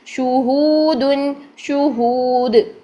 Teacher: ہو کو لمبا کریں گے واو مدہ کی وجہ سے